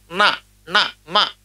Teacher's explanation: న మ ఇవి అనునాసికములు ముక్కుతో పలుకుతాం అందుకే న మ అంటాం నాసికానుస్వారస్య సున్నా ఉన్నప్పుడు కూడా ముక్కుతో పలకాలి అందుకనే